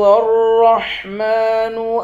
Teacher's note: میم پر کھڑا زبر ہے، ایک الف کی مقدار کھینچ کر پڑھیں گے